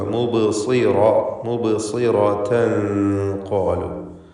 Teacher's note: ഇഖ്ഫാ ഹഖീഖി നൽകി തൻവീനിനെ അവ്യക്തമാക്കി മണിക്കണം. മണിക്കലിൽ തഫ്ഖീം വേണം, തടിപ്പിക്കണം.